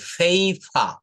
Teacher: প কে ফ বলতে হবে, ফেইফা। দুটো পি রয়েছে, এই জন্য প্রথম পি কে ফ, Paper.